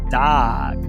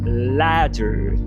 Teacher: Nome técnico é consoante oclusiva alveolar vozeada.